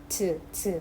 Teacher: 센 입천장이랑 혓바닥을 붙여요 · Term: 파찰음